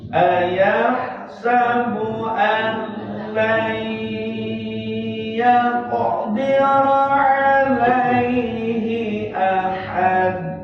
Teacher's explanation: nunnya masuk ke iya, lai, tapi pakai dengung 2 harokat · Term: idgham bigun